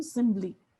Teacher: if our language does this intervocalic or sonorant voicing, then it will become simbly, right? So it would become a b.